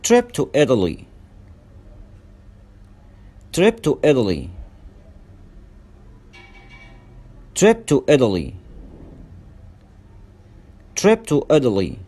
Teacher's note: وهنا التاء نطقناها داء ساوند مش تاء ساوند